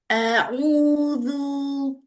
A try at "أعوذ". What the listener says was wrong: Lah, apa namanya monyongnya lebih kecil lagi. bibirnya. A'udzu.